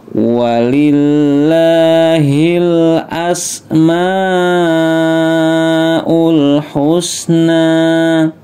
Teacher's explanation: Ini ada tanda bendera, ingat panjangnya 4-5 harokat atau 4-5 ketukan. Mat wajib mutasil ya, jangan lupa maknya dibaca panjang 4-5 ketukan.